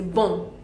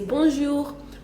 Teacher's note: We just nasalize and say bon, and so we say bonjour.